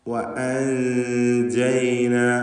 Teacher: എന്നാൽ വല്ലാതെ വായ തുറന്ന് എന്നായി പോകരുത്. നൂനിൻ്റെ മഖ്റജിൽ നാവ് സ്പർശിക്കുന്നതിന് പകരം അല്പം നാവിനെ അകറ്റി വെച്ചുകൊണ്ട് ഉച്ചരിക്കുന്ന രീതി, അതാണ് കൈഫിയത്തുൽ ഇഖ്ഫാ.